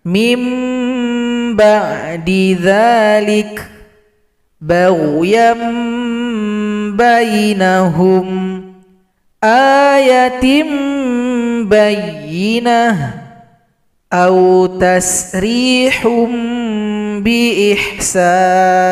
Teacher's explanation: Bunyi vokal n pada huruf nun dan tanwin kita ganti menjadi huruf m. Kemudian kita dengungkan kepada huruf ba. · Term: iqlab